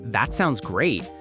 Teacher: For example, when we say that sounds great, the stress naturally falls on sounds and great